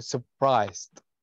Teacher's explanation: طيب عندي اللي هو لما أجي أنطقها في عندي حرف سايلنت اللي هو حرف الآر. حرف الآر هنا صامت ما ينطق